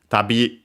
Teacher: accented on the last syllable on its own